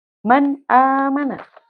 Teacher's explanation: Contohnya, man amana. Lihat, nun sukun di sini bertemu dengan hamzah atau alif, maka suara nunnya harus dibaca dengan jelas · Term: izhar